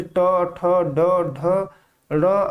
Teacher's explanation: इनका उच्चारण मूर्धा से होता है। जब जीभ मुख की छत यानी मूर्धा के कठोर भाग को छूती है तब इसका उच्चारण होता है। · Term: मूर्धन्य ध्वनि